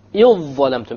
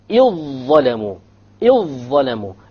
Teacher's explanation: You just ignore the dhal, you just merge it together.